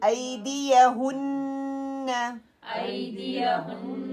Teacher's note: ہن پوری نوز سے آواز آنی چاہیے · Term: غنہ